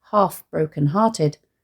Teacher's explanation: the alliteration of the aspirated h sounds and assonance of the r sounds which fall on the line's 2 stressed syllables, evoking the sound of a sigh.